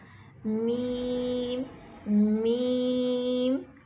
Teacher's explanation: اس کی آواز ناک میں بھی جاتی ہے کیونکہ میم میں غنہ کی صفت پائی جاتی ہے